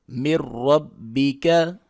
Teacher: میم زیر را مر، را زبر با رب، مر رب، با زیر بی، مر ربی، کاف زبر کا، مر ربی کا، سکون اور شد اکٹھی ہو گئی ہے، سکون کو نہیں پڑھیں گے، نون کو یہاں پہ نہیں پڑھیں گے، را کو ڈائریکٹ پڑھیں گے، را کو موٹا کر کے پڑھیں گے، پر کر کے پڑھیں گے، اور اس کو سختی کے ساتھ پڑھیں گے